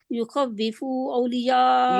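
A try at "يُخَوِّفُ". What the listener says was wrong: یخوف، فا لمبا نہیں ہے.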